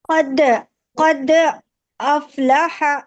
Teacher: قلقلہ قلقلہ ہو رہا ہے، یعنی آواز ڈبل آ رہی ہے، لوٹ رہی ہے آواز